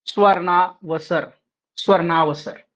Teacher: अ जमा अ मिलकर हो जाएगा आ की बड़ी मात्रा आ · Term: दीर्घ संधि